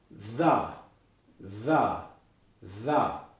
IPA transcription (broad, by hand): ð